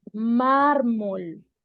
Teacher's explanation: tenemos conciencia de que estamos acentuando más la primera sílaba Por ende Esta es la sílaba tónica tenemos otros ejemplos como